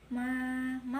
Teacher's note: bacaan mad tabi'i juga sebab fathah diikuti alif. Panjangnya 1 alif 2 harokat